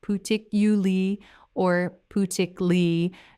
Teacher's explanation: Now this word has 6 syllables when you say it carefully, particularly, 6 syllables. But in natural speech, that middle section gets compressed, and many native speakers say it as particularly or putically, dropping the lar part almost entirely.